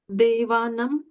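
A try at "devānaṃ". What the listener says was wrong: Okay. And that would be the same as the Ganges Valley pronunciation.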